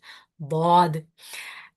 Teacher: it is a letter of isti'la, that means the back of the tongue is raised, so it's a heavy letter, and it is amongst the four letters, which are even the middle of the tongue is raised, so this sound is quite encapsulated.